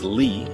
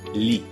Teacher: both come up towards the roof of your mouth Lee that in Italian only the tip of your tongue will come up and it reaches just behind your front upper teeth